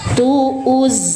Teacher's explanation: Alirkan suara zai tanpa terputus atau tanpa mantul juga